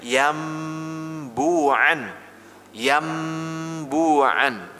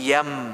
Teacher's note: nun sukun atau tanwin ini berubah menjadi mim kecil yang dibaca adalah mimnya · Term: qalb